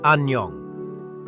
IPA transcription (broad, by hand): an·njəŋ